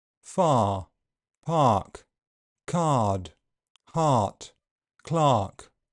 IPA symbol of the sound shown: ɑː